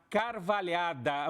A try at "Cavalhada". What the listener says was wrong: É Cavalhada, não tem o R. Cavalhada.